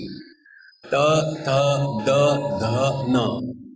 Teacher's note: The tongue has to go and touch the teeth. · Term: dantya